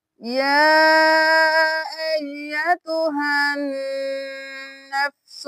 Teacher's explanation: تو کھڑی زبر ایک الف کے برابر کھینچ کے پڑھی جاتی ہے اور جو مد ہے وہ 5 انگلیوں کے برابر کھینچ کے پڑھی جاتی ہے، یعنی 5 حرکات کے برابر۔